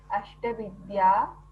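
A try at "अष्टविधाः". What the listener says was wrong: Ashtavidya. Where is Vidya? Vidaha means types. Ashtavidaha, 8 types.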